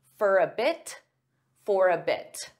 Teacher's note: sometimes native speakers will pronounce the T in this case because it's at the end of a sentence there's a period so we have to take a pause anyway